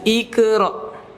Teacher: karena huruf qaf ini punya sifat istila, tebal. Maka qalqalahnya pun juga tebal.